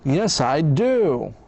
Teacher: It's very important to stress the affirmative verb and the answer do.